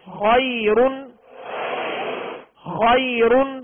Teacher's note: یہاں دو پیش کی تنوین ہے لہذا را کو پر پڑھیں گے ، اور جب وقف کریں گے خیر، اب را ساکن ہو